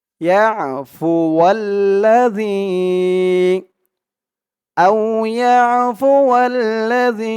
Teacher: জালের আওয়াজটা একদম নরম পাতলা করতে হবে, জিব্বার মাথা উপরের দাঁতের মাথার সাথে লাগবে এই জালের উচ্চারণটা করার সময়।